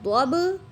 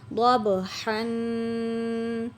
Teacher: ضاد با زبر ضب، با قلقلہ ہے اس لیے آواز مخرج سے لوٹ کر آ رہی ہے. اور ہا کے اوپر غنہ کریں گے، حروف ہلکی میں سے ہے اور ہا کی ادائیگی بھی کریں گے.